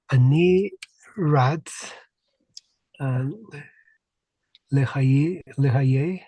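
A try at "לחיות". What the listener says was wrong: Right? Lahayye. We really want to hear this yud.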